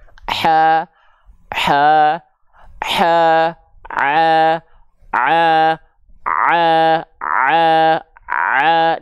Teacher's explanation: Ha kecil sudah kita ketahui dilafalkan dari bagian tengah tenggorokan kita.